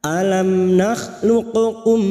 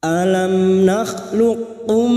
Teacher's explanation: bertemunya huruf q dengan huruf Kaf memasukkan huruf yang mati kepada huruf berikutnya dengan Menghilangkan sifat qalqalanya Apa yang dimaksud dengan huruf mati yaitu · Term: Idgham mutaqoribain